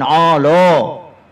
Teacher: Ain dah tebal, ain lam menjadi tebal